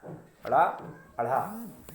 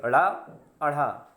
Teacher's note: तो आप इसको आप देखोगे कि जब इनका उच्चारण करोगे तो जीभ की नोक जो है वो आपकी, वो सबसे पहले उठ करके मूर्धा को, यानी जो उभरा हुआ भाग है दांतों की जड़ के पीछे, उसको टच करेगी। उसके बाद झटके के साथ नीचे चली आएगी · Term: उत्क्षिप्त